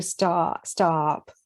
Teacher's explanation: And I would do stop with the ah, but I'm West Coast.